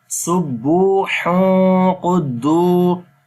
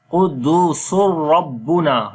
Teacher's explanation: Sin we connect with the ra.